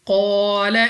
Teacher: قاف مستعلیہ میں سے ہے، موٹا پڑھنا ہے، الف سے پہلے زبر الف مدہ 2 سیکنڈ تک لمبا کریں گے۔